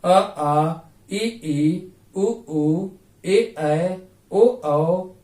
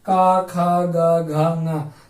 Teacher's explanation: कहीं भी हवा रुकावट नहीं पड़ रही है, गले से सीधा बाहर निकल रही है, मुंह में कहीं भी रुक नहीं रही